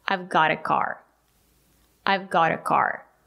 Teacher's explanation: The letter T is between two vowels. We pronounce it as a fast D.